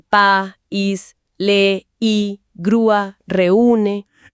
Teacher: la fuerza de voz, la sílaba tónica, cae justo en la vocal cerrada. Ajá, en la I o la U. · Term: hiato acentual